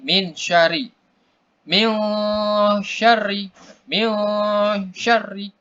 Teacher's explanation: kita membacanya samar dia dengung ya samar-samar tapi dengung. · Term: ikhfa